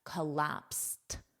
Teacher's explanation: the Ed is pronounced as a soft T